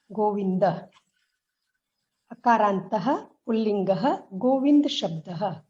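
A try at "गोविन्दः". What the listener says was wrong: Not Govind. Not Govind. You are saying Govind. Govind is not correct. You are cutting the. You are reading the Govinda as Govind, like in Hindi. Akarantaha pullingaha Govinda shabdaha. Govinda. Don't last vowel. If you put the last vowel, then it is no more Akaranta.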